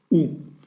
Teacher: Et enfin, vous avez le shuruk, qui est un point au milieu du vav, mais bien sûr le vav ne se prononce pas, on ne dit pas vous, on dira ou